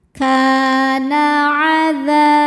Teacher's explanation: Sebab ada alif sebelumnya fathah. Cara bacanya huruf kaf panjang 2 harokat. Kana adza. Dza hukumnya mad tabi'i dhahiri.